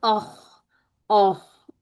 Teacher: خواہ جھٹکا نہیں دینا، ایک چلتی ہوئی آواز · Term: مفخم